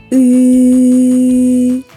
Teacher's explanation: коли ми вимовляємо звук і губи в посмішці зуби розімкнуті язик лежить у роціі його кінчик упирається в передні Нижні зуби